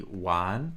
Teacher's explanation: the R sound is uh giving this word a kind of Beijing accent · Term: roticization